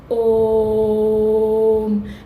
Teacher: ओम प्लुत स्वर है क्योंकि इसमें तीन गुना समय लगता है इसको बोलने में।